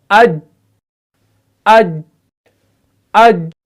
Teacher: آواز جو ہے وہ فوراً بند ہو گئی کیونکہ ہم نے قلقلہ کے بغیر اس کو ادا کیا. تو آواز جب بند ہو گئی تو معلوم ہوا اس حرف کے اندر سختی پیدا ہوگی, یعنی اس حرف کے اندر کیا شدت پیدا ہوگی. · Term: صفت شدت